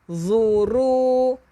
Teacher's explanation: hujung lidah keluarkan untuk zu